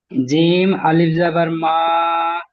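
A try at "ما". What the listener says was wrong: মিম মিম আলিফ যাবার মা, জিম আলিফ যাবার মা নয়, জি, মিম আলিফ যাবার মা,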